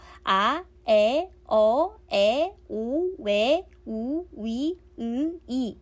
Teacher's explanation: 발음하는 도중에 입모양이 고정되어 변하지 않기 때문에 단모음이라고 해요.